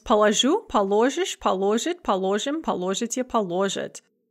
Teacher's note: Note the stress shift, so it is unstressed in the я form and stem stressed in the other form.